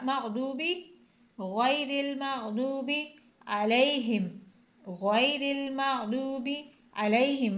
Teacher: गैरिल मुंह को पुर पढ़ के, यानी ऐसा लगे कि आपके मुंह के अंदर कुछ है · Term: मोटा हरूफ